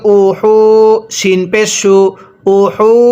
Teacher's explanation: এই হাগুলো উচ্চারণ করার সময় আমরা গলার মাঝখান থেকে বাতাস বের করব